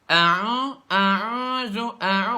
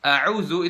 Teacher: a'udzu itu nggak ada sama sekali huruf yang keluarnya dari rongga hidung, semuanya dari rongga mulut